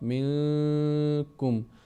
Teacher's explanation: پھر اخفا ہوگا نون ساکن کے بعد کاف · نون ساکن کے بعد کاف حروف حلقی حروف اخفا میں ہے، تو من کان یہاں پر اخفا ہوگا